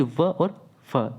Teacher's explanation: जो ऊपर के जो दांत है ना और नीचे के जो ओठ है, इन दोनों के मिलने से ही इन वर्णों का हम उच्चारण कर पाते हैं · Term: दंतोष्ठ व्यंजन